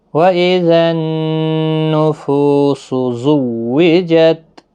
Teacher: نون مشدد پر غنہ ہوگا، فو واو مدہ ہے، 1 الف کی مقدار کے برابر کھینچ کر پڑھیں گے، زا سختی کے ساتھ پڑھیں، حروف صفیریہ کا حرف ہے، تا ساکن ہی رہے گا وقف کی صورت۔